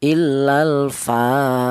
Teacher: huruf fa ini berharakat berdiri ini dibaca panjang yaitu satu alif atau dua harakat atau dua ketukan. illal fa seperti itu atau boleh dibaca mad thobi'i ya. · Kemudian illal fa, di sini ada huruf fa, di mana huruf fa ini berharokat berdiri, ini dibaca panjang yaitu 1 alif atau 2 harokat atau 2 ketukan.